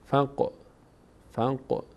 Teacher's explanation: قاف هم از اون حروف ساکنی هست که در هنگام تلفظشون در مخرج می‌لرزن